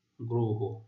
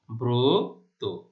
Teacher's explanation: র ফলা যুক্ত আদ্য অ এর উচ্চারণ সংবৃত বা ও এর মতো হয়